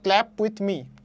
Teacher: তারপরে কি ক্ল্যাপ উইথ মি, এখানে ক্ল্যাপ হচ্ছে মেইন, বাকিগুলো উইথ মি কিন্তু মেইন শব্দ না, এখানে স্ট্রেস কিন্তু পড়তেছে ক্ল্যাপে